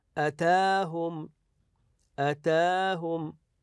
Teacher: نمدها بمقدار حركتين يعني مد طبيعي مثل المد العائدي مثل مد الالف العاديه نقول اتاهم اتاهم هكذا